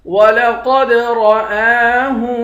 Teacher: حمزہ کے اوپر کھڑا زبر ہے، اس کو ایک الف کے مقدار کھینچ کر پڑھیں گے